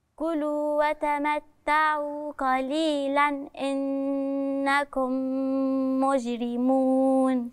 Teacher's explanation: التنوين هتظهر لوراء حرف من حروف الإظهار، الهمزة